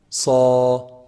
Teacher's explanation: if i say the alif with the sod it's going to be heavy